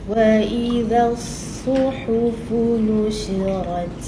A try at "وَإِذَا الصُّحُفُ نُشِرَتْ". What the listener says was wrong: Dia mulut tak bergerak. Dia bergerak kat muncungnya, tapi muncung dia pun gerak. وإذا ذا فذا ألف فتحة ذا buka rahang kan.